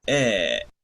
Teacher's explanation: esta es la E del inglés, que es la E abierta